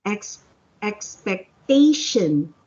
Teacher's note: when you say the word expectation the accent is on the third syllable